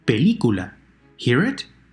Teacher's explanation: The 3rd to last syllable is stressed.